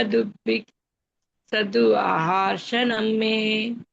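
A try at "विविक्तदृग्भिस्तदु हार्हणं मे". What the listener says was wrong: మాతాజీ అది హా మాతాజీ, హా వద్దు, అది షా కాదు.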